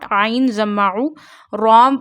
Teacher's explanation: Zaru ra because this is raw and raw has a zama sign on it. When raw got a zama or fata sign on it we read raw with a thick voice.